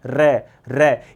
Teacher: भूकंप आता है तो बर्तन हिलते हैं ना घर में। वैसे र का उच्चारण करो। कंपन शुरू हो जाता है। · प्रकंपित अर्थात र का उच्चारण करने पर मुख विवर में भूचाल आ जाता है।